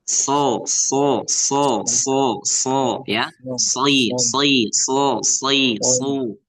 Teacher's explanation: cara baca sod itu ya pokoknya lidah bapak yang pangkal itu ngangkat